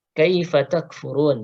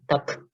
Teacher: kaifa kaf sukun, ingat ada sifat hamznya, jadi jangan sampai lewat ya. Tak ya, ada dorongan nafas.